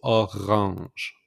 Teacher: So make the pronunciation R with the throat.